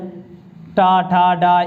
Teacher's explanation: ये सारे शब्द मूर्धन्य व्यंजन यानी मूर्धन्य के द्वारा बोले जाते हैं